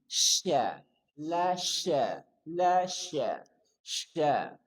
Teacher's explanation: Dari tengah lidah bertemu dengan langit-langit dan berikan sifat tafashi, semburan. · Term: shin